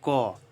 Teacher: देखिए क बोले तो इसमें अ का ध्वनि आ रहा है